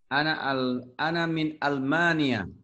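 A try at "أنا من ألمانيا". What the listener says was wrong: Ahsanta, bagus.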